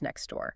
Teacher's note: So, the mouth just deletes the T entirely. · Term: elision